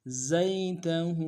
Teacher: ہا کے اوپر الٹا پیش ہے، ایک دال میں کھینچیں گے · زا کو یا کے سامنے لانا ہے، یا لین بغیر کھینچے پڑیں گے